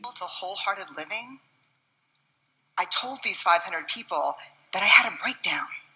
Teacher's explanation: she is generally speaking a lot more slowly a lot more carefully with big pauses between the sections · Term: slow careful delivery